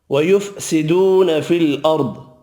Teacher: وَيُفْسِدُونَ فِي الْأَرْضِ واو مدہ ایک الف کی مقدار میں کھینچ کر پڑھیں گے. را ساکن ہے زبر کی وجہ سے پر پڑھنا ہے. پچھلا حرف زبر والا ہے.